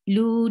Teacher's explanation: Waw sakin, and before waw sakin you find dhamma, you make it two haraka long. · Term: two counts long